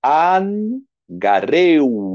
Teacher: Olha aqui um ditongo, gareu. No ditongo, o acento vem na segunda vogal, mas é lido como se estivesse na primeira.